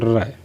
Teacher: एक कंपन सा होता है आपके मुख में जीवा के साथ। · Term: प्रकंपित या लुंठित